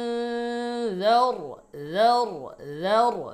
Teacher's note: জাল নরম, র মোটা, জার, জার অথবা জার এরকম শক্ত করা যাবে না, খেয়াল করেন।